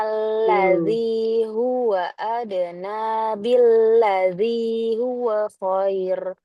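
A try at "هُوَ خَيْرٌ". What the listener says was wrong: Coba panjangin lagi. Dan dia roknya tipis. Nanti kita bahas insya Allah kenapa dia tipis. Khair ketika wakof pakai sukun.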